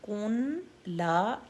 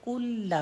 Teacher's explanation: لم یلد، لم یلد، لید، لید، لم یلد ولم یولد، لد، لم یولد، یو کی حرکت 2، ولم یولد، یولد، ولم یولد، ولم یکن لہ، لم یکن لہ، کاف کے بعد نون ساکن ہے اور آگے لام پر تشدید ہے، تو اس کا مطلب ہے یہاں پر نون 100% کوائٹ ہے، نون نہیں پڑھا جائے گا۔ کن لا نہیں پڑھیں گے، کل لا پڑھیں گے، کل لا، ٹھیک ہے۔ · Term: ادغام